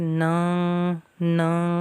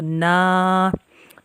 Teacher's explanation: ناک میں آواز لے کے جائیں گے تو غلط ہو جائے گا، منہ کا جو خالی حصہ ہے وہاں سے نا ادا ہوگا